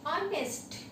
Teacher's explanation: Here in this word h is silent, okay. That's why we say honest, okay. That's why we use n here. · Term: h silent